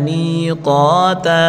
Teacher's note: میم یا زیر می یا مدہ ہے ایک الف کی مقدار کھینچ کر پڑھیں گے